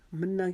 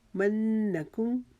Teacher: منہ کے اوپر جو نون ہے اس کے اوپر تشدید کی وجہ سے ہم نون گنہ کا ایک الف کی مقدار یہاں پر رکیں گے